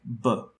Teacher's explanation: making the sound for example in a bilabial plosive like ba your lips come together and stop the air entirely and then they are released